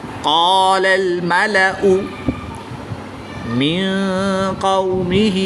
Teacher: نون ساکن کے بعد قاف حروف اخفا میں سے ہے تو یہاں پر اخفا ہوگا یعنی غنہ زمانی کر کے پڑھیں گے